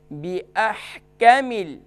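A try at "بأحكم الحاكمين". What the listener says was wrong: कामिल नहीं, इसको काफ को शॉर्ट करेंगे, बिअहकामिल,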